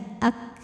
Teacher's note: Untuk kafnya yang sukun udaranya keluar setelah suaranya